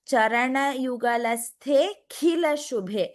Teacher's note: I could not hear the Mahaprana in the Kh.